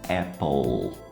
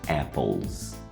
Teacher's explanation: Por ser o som do L, que é um som que causa a vibração, a gente usa o som do Z